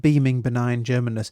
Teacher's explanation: So there's a repetition of these B sounds, these plosives.